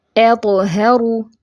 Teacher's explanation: قلقلہ صغرا ہوگا تو تھوڑی سی یعنی کہ گونج ہوگی۔ اطہروا، ہ اکسل حلق سے ادا کرنا ہے، ہا نہیں کر دینا، اطہروا ہا نہیں ہے یہ، ٹھیک ہے۔